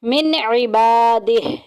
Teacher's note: نون ساکن کے بعد عین آ گیا جو کہ اظہار کے خاندان میں ہے، ظاہر کر کے پڑھیں گے، غنہ نہیں کریں گے